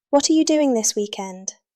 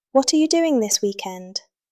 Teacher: Notice how what are becomes whatter. That is connected speech.